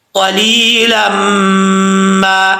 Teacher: कैसे, नून तनवीन के बाद अगर हुरूफ जर मलून में से कोई हर्फ आ जाए तो गुन्ना होता है, यहाँ मीम हुरूफ जर मलून में से है, तो यहाँ पे क्या हो रहा है, इदगाम जर मलून तनवीन का, तो एक अलिफ की मिकदार गुन्ना किया जाएगा